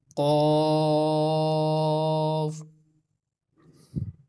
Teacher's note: زبان کی جڑ جب تالو کے نرم حصے پر لگے گی تو قاف ادا ہوگا۔ آپ بھی اس کی پریکٹس کیجیے، زبان کی جڑ کو تھوڑا سا بلند کریں، اوپر لگائیں تو پھر اس کو ادا کریں، قاف۔